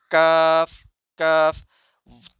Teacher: और इसी तरीके से काफ का जो हमारा मखरज है काफ का मखरज जब हमारे सॉफ्ट प्लेट से थोड़ा सा आगे हार्ड प्लेट टच करेगा वहां से काफ का मखरज अदा होगा · اور اسی طریقے سے کاف کا جو ہمارا مخرج ہے، کاف کا مخرج جب ہمارے سافٹ پلیٹ سے تھوڑا سا آگے ہارڈ پلیٹ ٹچ کرے گا، وہاں سے کاف کا مخرج ادا ہوگا